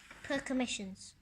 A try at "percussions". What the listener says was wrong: No, there's no M in there. Percussions. C-U-S. No M there.